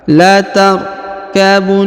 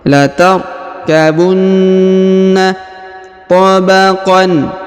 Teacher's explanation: Huruf na ditahan dan ditekan karena berharokat tasdid